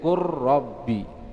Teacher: jadi masukkan ke huruf yang setelahnya menjadi qur rabbi, ya, dimasukkan ke huruf yang kedua.